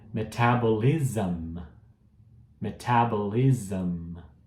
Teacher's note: Então você viu que o SM vira um ZAM no final